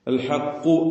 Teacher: ഹർഫുകളും clear ആയി അതിന്റെ മഹ്റജിൽ നിന്ന് ഉച്ചരിക്കണം അൽ ഹക്കു എന്ന് പറയുമ്പോൾ കാഫ് ഇസ്തിലാന്റെ ഹർഫാണ് തഫ്ഹീം ചെയ്ത് അതിനെ സ്വരഭാരത്തോടെ തടിപ്പിച്ചു പറയണം